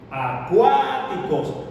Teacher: la sílaba tónica recae en la segunda sílaba, cuáticos. Entonces la sílaba tónica es la segunda.